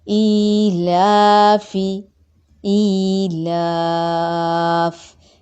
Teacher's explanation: یائے مدہ، ایک الف کے برابر لمبا ہوا۔ لا کھڑی زبر ہے، الف مدہ کے قائم مقام ہے، ایک الف کے برابر لمبا ہوگا۔ فا متحرک ہے، زیر کو مجہول نہیں کریں گے، فے نہیں کریں گے، فی۔ · ای کھڑی زیر ہے، کیا بنا یہ؟ یائے مدہ، ایک الف کے برابر لمبا ہوا